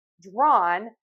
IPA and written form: drɔn (Drawn)